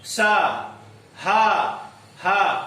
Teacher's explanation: उच्चारण में घर्षण से उत्पन्न वायु का निष्कासन होता है, सा घर्षण हुआ, सा हा जो ध्वनि निकली वो ध्वनि का घर्षण होता है, घर्षण और वायु का निष्कासन होता है। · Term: घर्षण व्यंजन